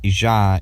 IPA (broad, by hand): ʒ